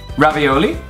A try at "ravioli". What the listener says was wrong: You guys put the accent on the wrong vowel. It's not ravioli. It's ravioli. It's on the O. Ravioli.